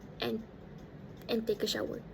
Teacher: The d sound in the word and was omitted. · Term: d sound is omitted